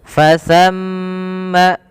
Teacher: yaitu huruf tsa ujung lidahnya ditempelkan dengan gigi seri kita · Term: huruf sa